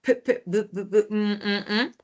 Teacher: ese sonido se da gracias a que se juntan los dos labios, ¿no? Y obstruyen el aire, ya no sale el aire. Cuando digo la A, recién sale el aire, ¿no? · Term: bilabiales